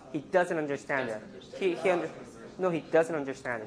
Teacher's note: If you want to stress does, then you would not have a flap.